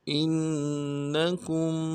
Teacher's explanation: حمزہ کو نون کے ساتھ ملانا ہے، نون کے اوپر تشدید ہے، زور دیں گے